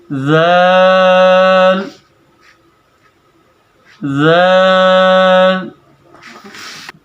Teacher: ذال کی ادائیگی کے اندر ہم جیسے ہم نے سا کی ادائیگی کی ہے، بالکل اسی طرح ہم ذال کی ادائیگی بھی کریں گے۔ ہم اپنے 2 دانتوں کے درمیان سے تھوڑی سی زبان کو باہر نکال کر بڑے ہی نفاست کے ساتھ اس کو ادا کریں گے۔